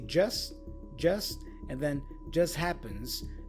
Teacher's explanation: So just here has the T dropped.